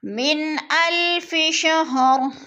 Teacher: نون ساکن کے بعد حمزہ حروف ہلکی میں سے آ گیا تو اظہار لفظ کو ظاہر کر کے پڑھیں گے، چھپائیں گے نہیں۔